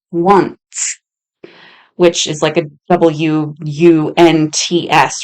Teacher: It's actually impossible to use an N and an S together and not have a tiny little T in there.